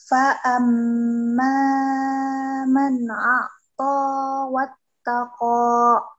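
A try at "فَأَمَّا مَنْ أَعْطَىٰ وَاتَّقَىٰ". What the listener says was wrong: Yang terlalu panjang. Fa'amma man a'ta wattaqa.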